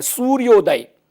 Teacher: ये सूर्य य में अ और उदय का उ, ये दोनों मिलकर गुण संधि ओ बन जाता है